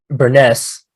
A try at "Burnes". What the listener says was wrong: Yeah, you just don't pronounce the E.